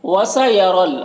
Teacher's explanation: را کے اوپر زبر ہے تو را کو پر پڑھیں گے، اور یہاں پر کوئی حرکت نہیں ہے، یا میں اور الف میں اس کو نہیں پڑھنا ہے۔